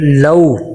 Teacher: لو لام کو تھوڑا سا واو کی طرف جھکائیں گے، واو پہ ہونٹ گول ہوں گے تو معروف ادا ہو جائے گا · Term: واو لین